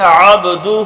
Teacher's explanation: دونوں ہونٹوں کے تر حصے کو ملا کر ہمارا کیا ادا ہوتا ہے؟ با ادا ہوتا ہے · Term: قلقلہ